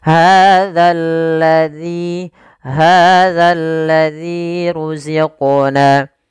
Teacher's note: hati-hati dalam melafalkan zal, jangan dibaca hazal lazi, diganti dengan huruf zai, nanti merubah makna. agar menyempurnakan daripada makhraj huruf zal, agar kita letakkan ujung lidah kita di kisar di atas sehingga terbunyi dengan za yang sempurna makhraj dan sifatnya.